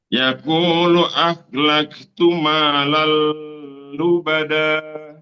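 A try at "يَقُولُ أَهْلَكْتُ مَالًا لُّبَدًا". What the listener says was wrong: Lalnya double saja Ustaz, tidak ditahan. Ya qulu ahlaktu malal lubada. Lalu segitu aja.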